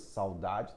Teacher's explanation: Lembra que o U de saudade é semivogal, não é vogal?